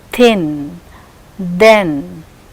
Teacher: The tip of the tongue comes close to the upper front teeth in both the cases. Thin, you can observe the tip of the tongue is coming close to the upper front teeth. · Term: dental